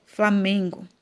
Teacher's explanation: Então, se você cantar a musiquinha aí, você vai perceber que a sílaba tônica ou seja, pronunciada com mais força, é o me